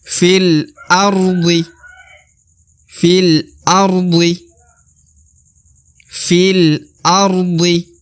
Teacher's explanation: Alif lagi lalu terdapat lam berharakat sukun maka kembali kita katakan huruf Fi langsung melebur ke huruf lam ya Jadi alifnya ini tidak dibaca